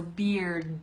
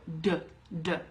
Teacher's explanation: Okay, and to make the hard D sound, your tongue starts behind your teeth at the top, and it goes down, but at the same time, you're making a really strong sound in your throat